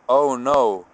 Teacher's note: the vowel for o is not so round let's say like the English o sound is kind of like an O and then a w oh no kind of hear the W at the end of